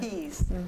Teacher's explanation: that soft palate actually has to lift and block off that nasal cavity so that you can make the pressure in your mouth so that you can say certain what we call plosive sounds.